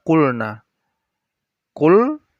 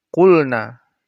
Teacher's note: Qulna, tidak boleh didengungkan atau dimasukkan. Jelas, dibaca jelas gitu. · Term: izhar